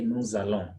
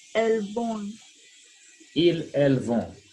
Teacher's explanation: when you have the pronoun and then the verb begins with a vowel and that pronoun ends with letter S, then you slur that, you link, and that produces the Z sound